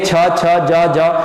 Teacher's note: तालव्य क्या है, देखो क वर्ग की जो साउंड होती है, यहां से देखो आप यहां से बोलेंगे ख ख ग ग, ये आपका जो है किस में आती है, कंठीय में आती है। जब आप जीभ का प्रयोग देंगे छ छ ज ज, तो तालु पे टकरा रही है